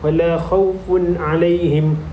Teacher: huruf tanwin berjumpa dengan huruf ain merupakan hukum izhar halki dan perlu dibaca dengan jelas dan tidak didengungkan